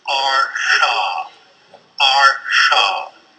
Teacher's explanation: it is still the same place of articulation post alular but the tip of the tongue is slightly curved back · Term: retroflex